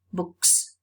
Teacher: the plural morpheme is going to be realized as a voiceless sound